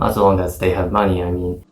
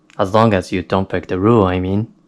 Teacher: I said this last part of the sentence pretty fast with a little bit of rising intonation at the end when I said I mean, I mean, native speakers often use this speech technique when they add something that is obvious or something that everyone should know.